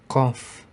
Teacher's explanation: Bunyi huruf qaf keluar dari pangkal lidah dekat dengan kerongkongan yang dihimpit ke langit-langit mulut bagian belakang.